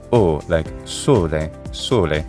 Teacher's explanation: we also have the closemid version which is o like sole sole